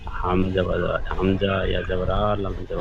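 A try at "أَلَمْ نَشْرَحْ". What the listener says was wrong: হামজা ইয়া নয়, হামজা জবর আ, লাম মিম জবর লাম, আলাম।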